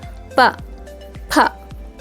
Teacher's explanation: ಪ ಅನ್ನುವಾಗ ಎರಡು ತುಟಿಗಳು ಸೇರುತ್ತೆ ಅಲ್ವಾ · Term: ಓಷ್ಠ್ಯ ಅಕ್ಷರಗಳು